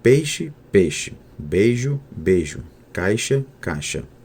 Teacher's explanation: Quando ei é seguido de R fraco, como dinheiro, dinheiro, há 98% de monotongação. Quando ei e ai são seguidos de consoante palatal surda, como sh, ou sonora, como j, o percentual de monotongação na fala é de 66%, como peixe, peixe, beijo, beijo, caixa, caixa.